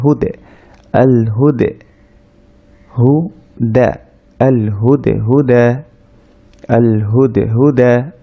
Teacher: আল হুটা গিয়ে দাল সাকিনকে ধরেছে, দাল সাকিন কলকলা হবে, কলকলা মানে সাউন্ডটা আবার একটু রিভার্ভ ধরনের হবে, অর্থাৎ একটু ফিরে আসবে।